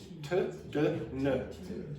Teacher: Okay, so just to clarify, the teeth, this is the top teeth. There's a little bit of skin, it's called the alveolar ridge, and an English native speaker touches there for these sounds.